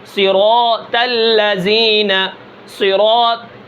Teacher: اگر تو کے اندر اگر صفت استعلاء اطباق ادا نہ کی جائے تو وہ تا بن جائے گا۔ تو اور تا یہ صفات کی وجہ سے ان کے اندر فرق ہے، اگر صفات ادا نہ کی جائے تو یہ تو موٹا جو ہے یہ تا بن جائے گا، جیسے صراط الذین، اب میں اس کو باریک کروں یعنی صفت ادا نہ کروں، صراط الذین، صراط ٹھیک ہے۔